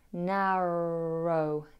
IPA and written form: ˈnærəʊ (étroit)